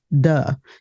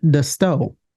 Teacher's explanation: so the dental fricatives are often replaced with other sounds of voice th as in the might be realized as a d as in do